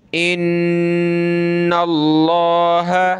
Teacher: نون پہ غنہ کریں گے اور لفظ اللہ کو موٹا کریں گے